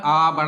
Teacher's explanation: विवृत मतलब ओपन मुख पूरा खुला होता है